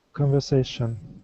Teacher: this s in the middle is an unvoiced S